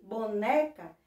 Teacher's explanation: eu descobri que a penúltima sílaba é a mais forte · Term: paroxítona